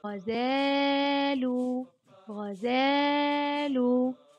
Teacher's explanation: حرف ألف المد أطال صوت الفتحة قليلا